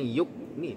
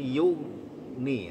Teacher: Ghainnya itu punya sifat rokhawah di antaranya alirkan bunyinya yu. Jangan yuk ni tapi yu ni, tebalkan dia karena dia punya sifat isti'ala ya.